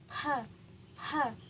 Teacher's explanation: saat kita mengucapkan ha tidak ada getaran di bagian leher